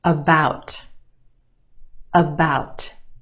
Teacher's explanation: the second syllable is emphasized or stressed the ow sound is stretched